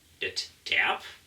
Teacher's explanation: Det Terp, da haben wir wieder das gleiche Wort mit T am Anfang und mit entrundetem Vokal